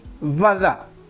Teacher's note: En ruso la B larga, o simplemente la B, sería B bilabial, mientras que la V es fricativa y se tiene que notar.